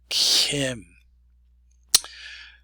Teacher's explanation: we're going to have a new sound for K, and that is Kim. It's a fricated K.